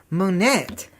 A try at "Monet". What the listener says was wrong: And in French, the E-T has a long A sound. So you pronounce it Monet.